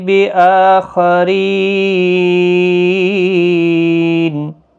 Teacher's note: وقف بالاسکان ہوگا، 3 سے 5 الف کی مقدار کے برابر کھینچ کر وقف کریں گے۔ یہاں پر مد العارض لازم وقف ہی ہوگا۔